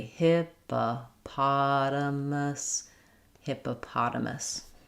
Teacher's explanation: we flap that t